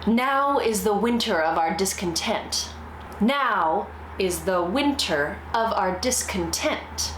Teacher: the pattern of unstressed, stressed is disrupted by the very first foot.